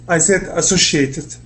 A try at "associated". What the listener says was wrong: Yeah, so it's associated, not the sh.